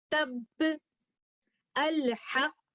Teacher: उस लफ्ज पर रुकने की सूरत में पहले वाला साकिन हर्फ हम मखरज के दो कंपोनेंट्स के तफादुम से अदा करेंगे और दूसरे वाला साकिन लेटर कलकला मैकेनिज्म की अदायगी से होगा